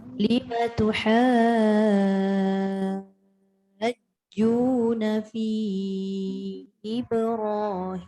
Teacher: Na tak boleh panjang. Tuha tu pastikan 6 harakat dulu.